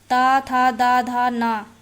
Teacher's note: ता, था, दा, धा, ना ये तो एक ही वर्ग में आ गए ना, और ये वर्ग जो है वो दंत्य है